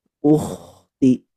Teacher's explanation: diusahakan kha itu seperti orang yang lagi mendengkur atau mengorok Bu ya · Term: huruf kha